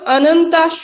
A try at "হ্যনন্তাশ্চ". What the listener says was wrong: ওটা অনন্তা নেই ম্যাডাম, ওটা হ্যনন্তাশ্চ হ আছে। দেখুন, ওখানে হয়ের উপরে মাত্রা আছে, তাই না? আচ্ছা, দেখুন, বহু শাখা হ্যনন হ্য, তাহলে হয় হ্যনন্তাশ্চ।